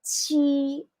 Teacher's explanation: we're using the first intonation. Monotonous, it's like you're singing.